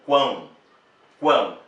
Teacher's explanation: o som também sai pelo nariz vejam bem digo quão quão o som está produzido também pelo nariz por isso é tritongo nasal · O som está produzido também pelo nariz, por isso é tritongo nasal, tritongo porque tem 3, vogal, semivogal, com vogal, enfim.